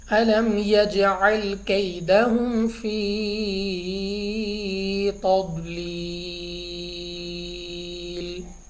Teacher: اب یہاں پہ ہمارے پاس جیم، تو جیم ہمارے پاس یہاں پہ ہے حروف قلقلہ میں سے، تو ہم نے اس پہ قلقلہ کرنا ہے یعنی ہماری آواز واپس لوٹتی ہوئی نکلے